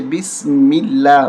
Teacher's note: میم پہ زیر ہے تو لفظ اللہ کا لام بسم اللہ باریک کر کے پڑھیں گے